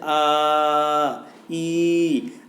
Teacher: जब किसी को लंबा खींच के बोला जैसे आ ई, तो ये कहलाते हैं आपके प्लत स्वर